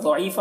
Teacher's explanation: ضاد کو پر پڑھنا ہے حروف مستعلیہ میں سے، اور یہاں پر یا مدہ ہے۔ فا یہاں پر وقف کی صورت میں ایک زبر کے ساتھ الف پڑھیں گے، جیسے ان کید الشیطان کان ضعیفا۔